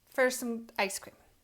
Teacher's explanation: We don't say for. We don't make that or sound. Instead, we say fur.